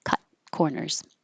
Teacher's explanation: And you won't hear that T. Just hold it.